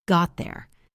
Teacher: Got there requires you to hold the T position and slide into the TH sound. Got there. It is tricky, but with practice, it becomes natural.